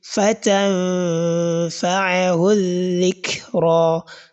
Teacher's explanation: So you are going to couple the lower lip with your upper incisors. So which is indicating the articulation point of letter fa. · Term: ikhfa